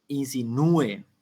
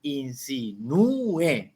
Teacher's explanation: la u cumple función de vocal tónica y la e cumple función de vocal átona y están separadas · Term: hiato